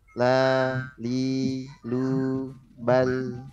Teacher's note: Tipis suaranya panjang 2 harokat, tidak dikasih akhiran hamzah atau ha.